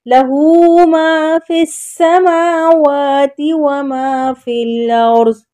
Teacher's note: سین کو باریک اور سیٹی والا بولنا ہے